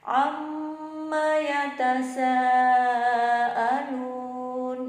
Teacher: yatasaalun, sanya ini panjang ya, mad wajib mutasil ya. Jadi kita baca 6 harokat ya.